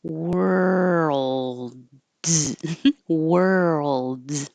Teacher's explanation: worlds by itself is a lot of movement. You're going from were to the ul. And as you move your tongue from to ul, keep making sound.